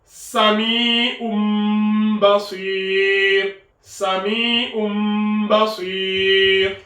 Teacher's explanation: ce qui se passe, c'est qu'on remplace le tanwin par le mim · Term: qalb